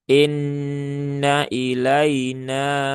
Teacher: sempurnakan ee menurunkan rahangnya sehingga yang keluar adalah bunyi kasrah ya, bukan bunyi imalah ya, bukan bunyi miring. Kemudian nunnya bertasdid.